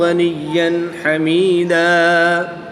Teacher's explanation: یہاں پر 2 زبر کی تنوین کے بعد ہا حروف حلقی میں سے ہے تو یہاں پر اظہار ہوگا، غنہ نہیں ہوگا۔ ہم تنوین کو خوب ظاہر کر کے پڑھیں گے